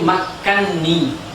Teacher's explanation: nun yang pertama dimasukkan ke nun yang kedua, sehingga dia menjadi makkanni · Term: idgham kabir